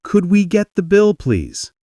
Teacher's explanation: Gentle, polite tone falls slightly at the end.